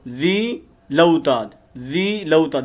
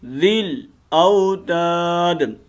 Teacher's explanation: وَفِرْعَوْنَ ذی الاوتاد وفرعون ذی الاوتاد وفرعون، اس نون کو لمبا نہیں کریں گے، ٹھیک ہے، اور ذال کو ڈائریکٹ ہم نے آگے لام کے ساتھ ملانا ہے